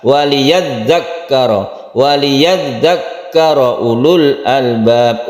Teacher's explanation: iyadzu karo Ulul Albab punya pendek lunya pendek Karena ada sukun lu ini aslinya panjang Ulu panjang Akan tetapi karena di sini ada sukun maka menjadi pendek